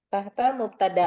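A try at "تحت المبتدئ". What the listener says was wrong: mubtada'i, Bu, tetap. Walaupun hamzahnya di atas tetap kita bacanya i. Tahtal mubtada'i wa khotoini tahtal khobari.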